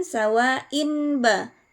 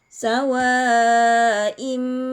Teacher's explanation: tanwin berubah menjadi mim disertai dengan dengung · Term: iqlab